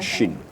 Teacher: Jadi sifatnya tafashi. Agak ada semburan. Ada semburan anginnya ya. Agak tajam sedikit.